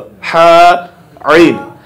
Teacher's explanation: এটা হলো হলকের মাঝখান থেকে উচ্চারিত হা আইন।